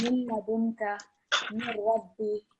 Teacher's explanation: you can't hear the Noon Sakin or the Tanween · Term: complete assimilation